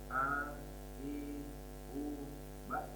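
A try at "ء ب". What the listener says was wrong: Hamzah kuat. Ba. Oke, jangan sampai miring ke ain. Ba, tidak boleh. Ba. Kuat.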